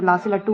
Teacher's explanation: जो ला से लड्डू होता है वो पार्श्विक ध्वनि के अंतर्गत आता है